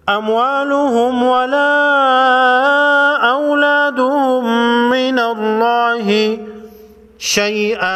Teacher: نون لفظ اللہ سے پہلے حرف پر زبر ہے، لفظ اللہ کے لام کو موٹا پڑھیں گے